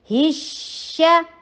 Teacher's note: शीन कौन सा है, नरम हरूफ में से है, यस, चलाते चलिए जाइए इसकी आवाज़ को